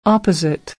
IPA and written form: ˈɑː.pə.zɪt (Opposite)